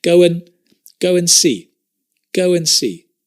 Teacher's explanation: that go and go when go and and the d drops so just to confuse you we add a wa and we drop the duh